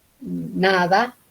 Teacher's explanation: La N de nada, en la lengua va detrás de los dientes